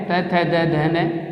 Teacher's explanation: उसके बाद में हम बात करते हैं दंत्य की, यानी हमारी जीवा जो है वो दांतों के टकराएगी